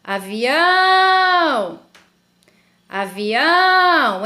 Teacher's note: então eu sei que a sílaba tônica da palavra avião é o ão